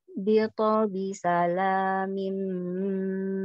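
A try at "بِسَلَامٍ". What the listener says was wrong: Kol-kola huruf to-nya ditebalkan sudah, tapi jangan jadi harokat. Jadi kalau bito, bito itu harokat. Tabrakan dulu ke to-nya, bito.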